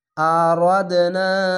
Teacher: এখানে কলকলা, কলকলাটি ধাক্কা মেরে নিচে সাউন্ড আসবে